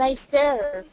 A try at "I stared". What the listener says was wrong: Keep that air nice and long. I stared. More air. I stared.